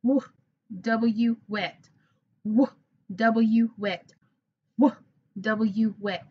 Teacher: My lips are coming together, w, and I have my tongue in the way a little bit. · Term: w sound